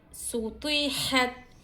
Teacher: जज्म वाले हर्फ को पिछले वाले हर्फ की हरकत से मिलाकर पढ़ेंगे। सीन को बारीक पढ़ेंगे, तो को मोटा पढ़ेंगे।